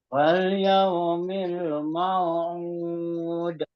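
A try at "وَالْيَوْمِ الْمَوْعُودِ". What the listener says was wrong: U-nya kurang ya, ainnya. Mau'ud. Mau'ud. Ud.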